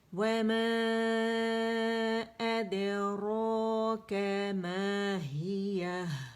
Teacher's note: ہاں کی زیر ضرور ادا کرنی, آواز نیچے جانی چاہیے